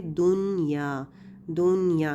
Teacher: نون کو اس کے مخرج سے واضح کر کے بغیر غنہ کے پڑھیں گے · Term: اظہار مطلق